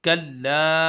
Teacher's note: लाम को हम खींचेंगे भी क्योंकि मद्दे मुनफसिल है, 2 से 3 अलिफ के बराबर खींचेंगे